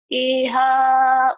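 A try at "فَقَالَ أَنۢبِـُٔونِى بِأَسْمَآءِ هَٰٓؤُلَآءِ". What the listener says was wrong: Hati-hati. Nggak boleh nyambung dari iha. Nggak boleh.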